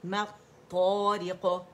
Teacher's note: اور یہ جو ہے لام جو ہے یہ طا کے اندر مرج ہو گیا تو لام شمسیہ ہے